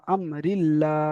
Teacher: হামজা মিম জাবার আম, রয়ের নিচে জের আছে, যেটি হলো হারাকাত, হারাকাতের পর আগে তাড়াতাড়ি পড়তে হয়, টান দেওয়া নিষেধ। আল্লাহ শব্দে লাম তাজদিদের পূর্বে জের এসেছে, তাই আল্লাহর লামকে বারিক অর্থাৎ লা পড়তে হবে। আহ, এবং লামের উপরে খাড়া যাবার রয়েছে, খাড়া যাবারটি হলো আলিফ মাদ্দা সমতুল্য, তাই এক একালি পরিমাণ টান দিয়ে পড়তে হবে।